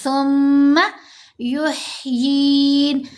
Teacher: والذی یمیتنی ثم یحیین، یمیتنی، میم کو بھی ہم نے کھینچنا ہے، نون کو بھی، یمیت، میم کے نیچے زیر، ساتھ یا ساکن، یہاں بھی یا مدہ، یہاں بھی یا مدہ۔ سا کو نرمی سے پڑھتے ہوئے میم سے ملائیں گے، میم مشدد ہے، غنہ کریں گے